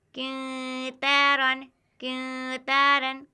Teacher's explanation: 2-3 second तक आवाज़ को नाक में छिपाएंगे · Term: इख्फा